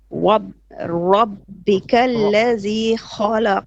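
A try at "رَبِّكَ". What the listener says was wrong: too much too much lips movement no not lips tongue rah rah rah rah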